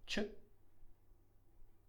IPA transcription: t͡ʃ